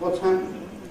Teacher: So the word ‘has’ gets reduced to just “What’s /wɒts/ happened?”